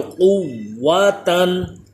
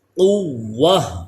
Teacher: گول تا پہ جب وقف کریں گے تو یہ گول تا کو ہا میں بدل دیا جائے گا، اس کی حرکت زبر زیر پیش وغیرہ سب کچھ ختم ہو جائے گا اور یہ ہا ساکن پڑھی جائے گی.